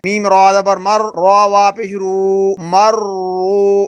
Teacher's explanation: را پر زبر ہو یا را پر پیش ہو تو را پر پڑھی جاتی ہے، موٹی پڑھی جاتی ہے، تو ہم نے را کو موٹا پڑھنا ہے۔